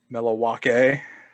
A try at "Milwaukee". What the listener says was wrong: No, you don't pronounce it like that either unless you're. You say Milwaukee. No L. Milwaukee.